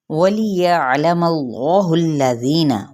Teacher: واو ہونٹوں کی نا تمام گلائی کے ساتھ، یہ دیکھیں یا عین کی وسط حلق سے ضرور ادا کرنا ہے، یا لا نہیں پڑھنا، یا لا، ٹھیک ہے، عین کو ہم اس کو کٹ نہیں کر سکتے، اس کو اپنے مخرج سے وسط حلق سے ادا کرنا لازمی ہے۔